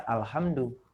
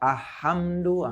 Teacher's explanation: Tidak boleh dibaca ahamdu, masuk ke huruf selanjutnya. Tetapi harus jelas lamnya dibaca. Izhar itu jelas.